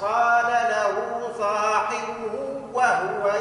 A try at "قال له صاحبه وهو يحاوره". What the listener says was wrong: صاحبه كان مشدد صاحبه وهو